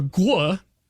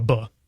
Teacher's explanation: So anytime you have a tia in Proto-Indo-European, it's going to become a sa in Greek, and then anytime you have a gua, it's going to become a ba. It simplifies to a ba.